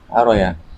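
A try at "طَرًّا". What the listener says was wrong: Makanya harus tasdid tarro.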